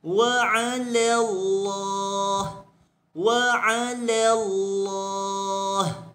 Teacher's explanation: Dia kata li mujawaratiha lam al-mufakhamah min ismillah. Maka lam yang pada nama Allah sahaja dibesarkan. Adapun pada perkataan wa 'ala, la pada di sini tidak dibesarkan, kekal dengan muraqqaqah, kekal dengan nipis sebutannya.